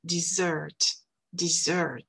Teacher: D'accord? En français, on dit S, dessert, mais en anglais, on dit Z, dessert, dessert. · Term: le son Z